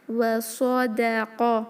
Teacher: صاد heavy, قاف heavy, واو اور دال لائٹ